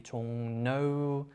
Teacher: Sometimes it is written as an R but pronounced like N.